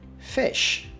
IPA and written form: fɪʃ (Fish)